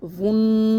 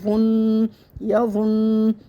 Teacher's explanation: صورت میں آئے گا، یا زبر یا وہ، نون پیش ون، ہونٹ بالکل گول کرنا ہے، ون نہیں کرنا ہے، ہونٹ گول ہوں گے تو ادائیگی صحیح آئے گی